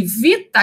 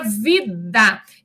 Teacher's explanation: o T é uma consoante surda, O D é uma consoante sonora · A única diferença dessas consoantes homorgânicas é a questão da sonoridade, que uma é surda e a outra é sonora.